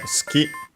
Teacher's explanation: it's between unvoiced consonants so it's barely heard if at all